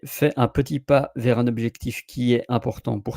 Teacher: when there is a consonant and a vocal on the other side, like est important, you make the link